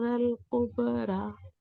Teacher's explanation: ra heavy, kaf light, ba with qalqala